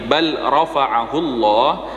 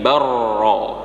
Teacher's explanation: ketika huruf lam kemudian di depannya ada huruf ra, maka huruf lamnya dihilangkan, langsung dimasukkan ke huruf ra. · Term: Idgham mutaqaribain